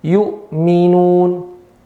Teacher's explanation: Hamzah di mana? A, pangkal lidah. Mim di mana? Kedua bibir. Maka secara sepakat dibaca secara jelas. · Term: izhar